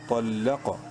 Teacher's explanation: طا کو bold letters میں سے ہے، لام زبر لا طل، قاف زبر قا، قاف کو بھی منہ بھر کے پڑھیں گے، بولڈ کر کے پڑھیں گے